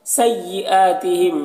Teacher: سیئاتہم یہاں پر حمزہ میں کھڑا زبر ہے، ایک الف کے برابر کھینچ کر پڑھیں گے